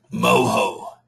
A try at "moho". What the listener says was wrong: No, mo. In Spanish, the H doesn't sound.